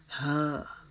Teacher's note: یہ ہم اپنے حلق کے نیچے والے حصے سے نکالیں گے، جیسے انسان تکلیف کی حالت میں آواز نکالتا ہے ہا، تو یہ 2 نقطوں والی ہا جو ہے یہ اس کی اس طرح آواز دیں گے.